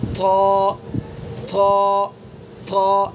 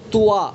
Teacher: تا دال طا تینوں کا مخرج ایک ہے۔ طا کو پر کر کے پڑھیں گے، اس کی صفت بلندی ہے، پر ہونا اس کی صفت ہے · زبان کی نوک اور ثنا علیہ کی جڑ، مخرج وہی ہے، زبان کی نوک ثنا علیہ کی جڑ، بس پر کر کے پڑھیں گے اس کو، یعنی منہ بھر کے۔